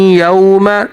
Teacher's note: वाव साकन से पहले ज़बर है, तो यहाँ पर वाव हरूफ लीन है, तो वाव को थोड़ा सा खींच कर पढ़ेंगे, यौम, इस तरह से।